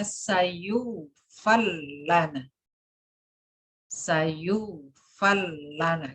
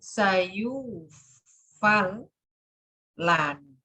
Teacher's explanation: Jadi idgham murni itu ro langsung masuk lam 100% masuk gitu.